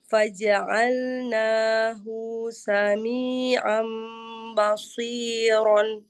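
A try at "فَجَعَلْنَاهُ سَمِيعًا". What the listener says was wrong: Hu-nya tidak panjang. Faja'alnahu sami'am.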